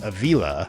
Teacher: pronounced Avila with the accent on the second syllable when it should have been Ávila.